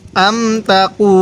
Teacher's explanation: এই কফ এর মধ্যে আমরা এক আলিফ টান দিব কারণ পেশের বামে ওয়াও সাকিন থাকলে সেখানে আমাদের এক আলিফ টানতে